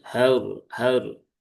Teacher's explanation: r-nya dibaca dengan tebal atau tafkhim karena dia berhubungan dengan harakat fathah. Berhubungan dengan harakat fathah. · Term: ro yang sukun